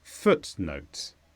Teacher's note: this is a noun with a stress on foot